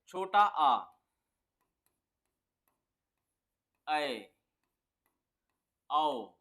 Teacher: खुलेगा अर्ध विवृत कौन सा है अर्ध विवृत में क्या होगा जो मुख द्वार है हमारा वो पूरा नहीं खुलेगा आधा खुलेगा